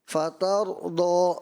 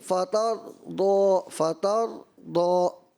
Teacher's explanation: فطر تا باریک ہے، را موٹا ہے، فطر دو، تو یہ را واضح محسوس نہیں ہوا نا، ایسا لگا کہ فطر دو۔